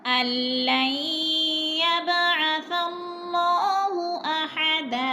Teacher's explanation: यब पे कलकला हो रहा है, बा साकिन है और हरूफ कलकला में से थोड़ा सा हिलाकर पढ़ेंगे